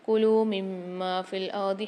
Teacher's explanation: یہاں میم کے ساتھ میم کو ملا کر اور غنہ کر کے پڑھیں گے کہ میم پر مشدد آ رہی ہے، کھینچ کے بھی پڑھیں گے۔